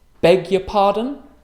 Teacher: U is unstressed and a schwa, so it's y.